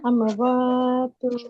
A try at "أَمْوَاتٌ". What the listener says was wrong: আমো এরকম হবে না, আমওয়াত। টু হবে না আপু, কারণ এটা হচ্ছে শুধুমাত্র, এটা হচ্ছে শুধুমাত্র 2 জবরের ক্ষেত্রে প্রযোজ্য, 2 জের বা 2 পেশের ক্ষেত্রে প্রযোজ্য না।